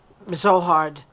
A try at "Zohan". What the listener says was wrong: Zohan. No, there's no D.